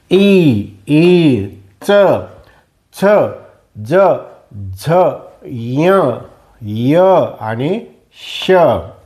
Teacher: अशी मधला भाग जिभेचा लागतो त्याला तालव्य वर्ण म्हणतात